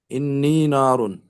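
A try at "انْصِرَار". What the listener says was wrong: नहीं नहीं नहीं नहीं नहीं, स्वाद कहाँ गया? हाँ, इन सी सारुन। आइन कलमा स्वाद है, इन सी सारुन,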